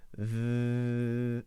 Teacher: The tongue is out between the teeth. It's vibrating between the teeth. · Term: voiced TH sound